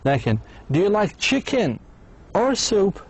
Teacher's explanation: the speaker's voice goes up on the first one and down the second one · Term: either or question